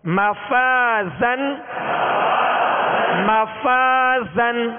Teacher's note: اور آخر میں زا، زا کو سختی کی آواز، سیٹی کی آواز اس میں پیدا ہوگی · اور الف مدہ ہے، الف مدہ کو ایک الف کی مقدار میں کھینچیں گے، مگر الف سے پہلے والے حرف کو ہم دیکھیں گے کہ اس میں باریک پڑھنا ہے یا پر پڑھنا ہے. تو پہلے والا حرف فا باریک ہے، لہذا الف کو باریک پڑھیں گے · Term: ترقیق